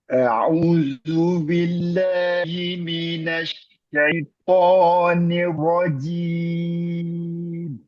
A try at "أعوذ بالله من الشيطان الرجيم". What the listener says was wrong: Double R-nya. Syaitonir.